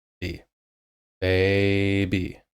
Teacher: Baby, baby. So I'm saying the B just as I normally would, doing a stretch on A, and then I'm doing the remainder of the word just how it normally would.